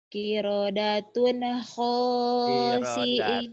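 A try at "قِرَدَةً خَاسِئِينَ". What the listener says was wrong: Kirodatan bukan kirodatun ya. Kiradatan khasiina.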